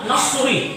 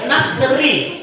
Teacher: Tidak boleh dibaca tebal, nasrui tidak boleh. Harus tipis, nasri.